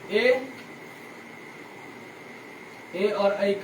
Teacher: इसलिए अभी समझ जाइए ए और ऐ का उच्चारण स्थान क्या होता है? कंठ और तालु।